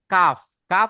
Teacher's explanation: কাফ উচ্চারিত হয় জিভের গোড়া থেকে একটু সরে এসে, মানে জিভের গোড়া থেকে একটু সরে এসে তার বরাবর উপরের তালুর সাথে লাগিয়ে উচ্চারিত হয় কাফ।